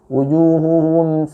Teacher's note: sedikit ditahan, lebih lama lagi, ya, seperti kadarnya mad asli atau mad tabi'i.